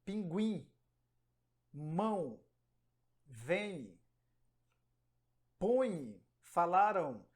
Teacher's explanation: é o som que sai do pulmão ele passa pela boca e também pelo nariz